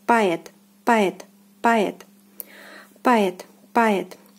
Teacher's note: O here is unstressed, and it is not pronounced as O anymore. It is pronounced as A, poet, poet, poet. · the accent, the stress falls on the second syllable